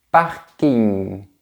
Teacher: On a aussi un son qu'on entend dans les mots empruntés à l'anglais, comme dans camping ou parking. On dirait qu'on va dire g, mais on s'arrête juste avant.